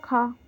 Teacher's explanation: स्पर्श व्यंजन कंठय ध्वनि, अघोष और महाप्राण ध्वनि है।